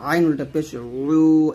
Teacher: এখানে ওয়াওটা দুই ঠোঁট গোল করে নিয়ে আসবেন, ওয়া উল্টা পেশ উ এরকম, আর ইয়াটা জিহ্বার মধ্যখান উপরতলার সঙ্গে লাগাবেন, ইয়া উল্টা পেশ ইউ, হামজা উল্টা পেশ উ হলকের শুরু থেকে, আর আইনটা চাপ দিয়ে নিয়ে আসবেন হলকের মাঝখান থেকে, আইন উল্টা পেশ উ এরকম।